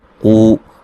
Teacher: قاف کو موٹا ادا کریں گے اور یہ و مدہ ہے، وقفاً بڑی مد کے ساتھ پڑھ سکتے ہیں اور وقفاً را کو موٹا پڑھیں گے، ملانے کی صورت میں را کو باریک پڑھا جائے گا۔